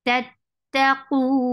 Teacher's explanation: when you will stop, you will give waqf on noon, you will give sukoon. So it will get sifa of tawassut. And tawassut is a medium flow of sound.